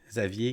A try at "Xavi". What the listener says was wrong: Non, Xavi. Xavi. R. Il n'y a pas le R. Xavi. C'est comme Xa. Puis après ça, il y a Vi. Mais Vi.